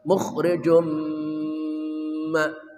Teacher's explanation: tanwin bertemu mim, idgham bi gunnah, memasukkan dengan suara dengung atau gunnah